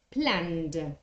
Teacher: You have to pronounce the ed with another voiced sound, with a d. So the verb plan, for example, becomes planned.